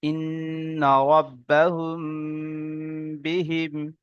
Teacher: মিম সাকিনের পরে যদি বা আসে, তো মিম সাকিনকে একালি পরিমাণ গুণনা করে পড়তে হবে। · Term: ইকফায়ে স্বাভাবিক